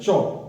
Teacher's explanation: जैसे उस वर्ण को बोलोगे तो जीभ का अगले हिस्से टच करेगा नीचे, इसमें च वर्ग आ जाता है। जैसे च, तो आप जब इसको च को बोलोगे तो जीभ का आगे वाला भाग टच होगा उसमें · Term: स्पर्श संघर्षी